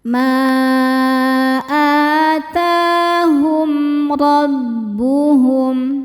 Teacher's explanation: Sebab mim sukun menghadapi huruf yang bukan mim ataupun ba. Di sini ro ya. Cara bacanya mim sukun dibaca jelas. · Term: izhar syafawi